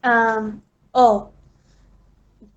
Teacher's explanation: This vowel is pronounced with wide open jaws and slight open lip rounding. The back of the tongue is raised just above the fully open position, no contact being made between the tongue and the upper molars. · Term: short O